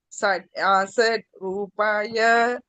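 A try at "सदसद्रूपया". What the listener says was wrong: not asat. Sadasat.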